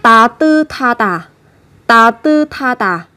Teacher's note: Như vậy chúng ta chú ý, đằng trước là một âm tiết, kết thúc là một phụ âm sờ, theo sau của nó là một âm tiết bắt đầu bằng phụ âm hờ, thì hai cái âm này sẽ được kết hợp với nhau phát âm thành thờ